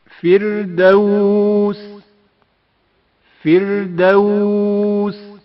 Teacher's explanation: فردوس فردوس را سے پہلے زیر ہے، جس کی وجہ سے را باریک پڑھا جائے گا۔ فردوس فردوس الاربہ۔ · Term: ترقیق